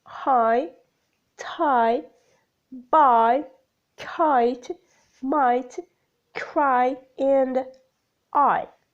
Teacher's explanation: the glide begins in an open position between front and center moving up and slightly forward towards /ɪ/ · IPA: /ɑɪ/